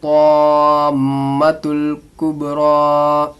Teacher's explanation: हुरूफ मद्दा के बाद तशदीद या जज़म आने से मद्दे लाजिम होता है, इसको 5 अलिफ के बराबर खींचना है।